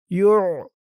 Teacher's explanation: আইনের উচ্চারণটা গলার ভিতর থেকে শক্ত হয়ে বের হবে।